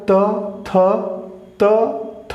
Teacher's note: जीवा जो है आपके दंत को छूते हुए निकल रही है